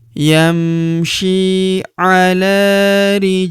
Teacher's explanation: Huruf ja berharakat sukun kita pantulkan atau kita qalqalahkan.